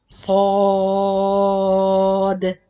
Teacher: remember to do the sod heavy sound or with full mouth, and the dal light sound with qalqala